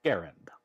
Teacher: an initial G hard, as in go, first A short, as in Harry, second A somewhat more obscure, as in errand, accent on the first syllable